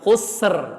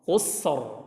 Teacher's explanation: Sebelumnya huruf ha yang dhammah. Jadi bukan baca husr, tapi hussor. Ro-nya tebal.